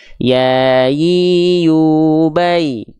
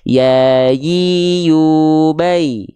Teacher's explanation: kalau huruf ya Tengah lidahnya enggak nempel cuman ngangkat ngawang ke atas aja